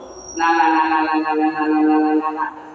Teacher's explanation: Di antara kepala lidah dan gusi gigi seri atas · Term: nun